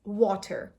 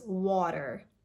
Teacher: The T sound in American English sounds like a duh sound, a very soft duh sound. So it's a flap T.